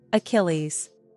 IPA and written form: əˈkɪl iz (Achilles)